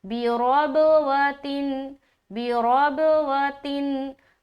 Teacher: तो यहाँ पर हम पढ़ेंगे जन्नतिम बिरबवतिन, बाज़िर बी, रौ बाज़बर रब, वाव ज़बर वा, रब वा, ता दो ज़ेर तीन, रब व तीन। बा में फिर कलकला कर रहे हैं, लेकिन रा की जो अदायगी है वो मोटे तरीके से करेंगे